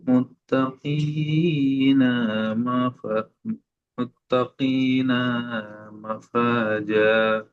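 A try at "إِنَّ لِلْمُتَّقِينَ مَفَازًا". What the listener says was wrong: এখানে দুটো নুন সব টান হয়ে গিয়েছে। এখানে দেখেন নুনের উপর হারাকাত, এখানেও নুনের উপর হারাকাত। এই নুনটা শুধু গুন্না হবে একালিফ, কিন্তু টান ইন্না লিল মুত্তাকিনা মাফাজা।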